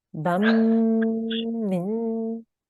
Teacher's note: making sure you're holding and making that 2-second nasal sound